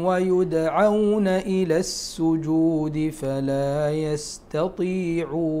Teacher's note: الدال الساكن من حروف قلقلة، فيه القلقلة.